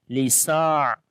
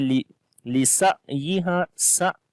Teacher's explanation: On the ain we read soft sound and also tawassut quality